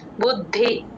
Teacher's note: ద కింద ద వత్తు మహాప్రాణం రెండు వినబడాలి